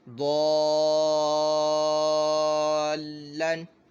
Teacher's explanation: یہ جو لام ہے یہ اسم جلالت یعنی اللہ عز و جل کے نام مبارک کا لام نہیں ہے، تو ہم نے اس لام کو باریک پڑھنا ہے